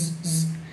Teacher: la S, que justamente hace un sonido z